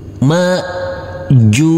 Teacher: huruf Jim karena kita wakafkan maka hukumnya wajib kita pantulkan karena ini adalah bacaan Qalqalah